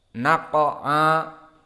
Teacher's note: qaf di sini mufakhamah dan ain huruf muraqqaqah dan alif karena mengikuti ain berarti muraqqaqah juga